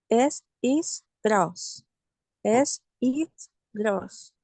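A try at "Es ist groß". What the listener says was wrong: Trate de modular un poquito más la gross, gross, que venga la fuerza de acá, gross. Bueno, vamos a seguir practicando más esa la R gutural. Recuerden que es la R francesa, también se le llama a esta.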